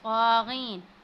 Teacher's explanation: क़ा को हमने मोटा पढ़ना है, उसके ऊपर खड़ी ज़बर है, उसको हमने थोड़ा सा खींचते हैं।